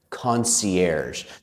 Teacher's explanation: we take the sh sound shh and add our voice